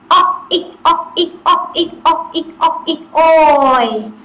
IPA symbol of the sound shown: ɔɪ